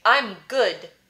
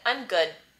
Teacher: you hear how the d doesn't explode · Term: no audible release